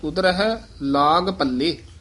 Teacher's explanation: ਪੱਲੇ ਪਦ ਜਿਹੜਾ ਇਹ ਕਸਕੇ ਕੇ ਬੋਲਣਾ ਇਹਨੂੰ ਪਲੇ ਨਹੀਂ ਕਹਿਣਾ